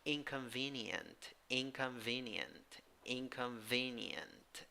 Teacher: in the second syllable you have a schwa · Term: schwa with Y